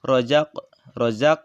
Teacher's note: dibacanya terang dan memantul dan bunyi pantulannya kecil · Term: Qolqolah Sugro